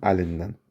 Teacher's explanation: Əlindən sözündə dəyişiklik var. Burda D keçir N-ya.